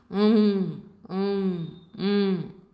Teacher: you close the mouth and some air comes out of the nose, because only the nose is the point of articulation. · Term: anuswaraha